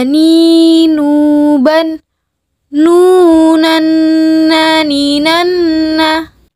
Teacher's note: dilafalkan huruf nun dengan menyentuhkan lidah terdekat dengan langit-langit bagian depan